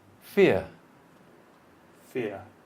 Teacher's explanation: It's not 2 syllables, it's 1 syllable, but with 2 vowel sounds. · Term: diphthongs